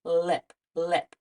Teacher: buzzing lastly for the oo sound like in the word lip it's made with our tongue touching right behind the teeth and the air flows around the sides of the tongue